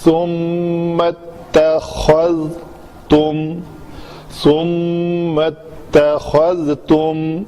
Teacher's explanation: ذال کو پکڑ کے رکھنا ہے, اس کو کلکلا نہیں ہونے دینا.